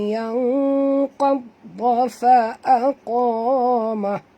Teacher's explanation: nun mati bertemu qaf juga kena masuk dan sorokkan bunyi nun ini ke dalam huruf qaf pada kadar separuh disertai dengan dengung, dua harakat ikhfa haqiqi.